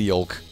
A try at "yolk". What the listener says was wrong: Did you say yolk? You pronounce the L in yolk?